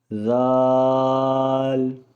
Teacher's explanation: اس کی ادائیگی کا وقت زبان کی نوک کو سامنے کے 2 دانتوں کی نوک سے لگانا ہے اور اس کو نرمی سے ادا کرنا ہے۔